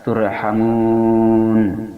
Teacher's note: ada mad bertemu dengan arid lis sukun, dinamakan mad arid lis sukun, panjangnya 2-6 harakat